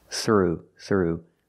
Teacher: let's look at the pronunciation pay through the nose we see the th in through makes air with no voice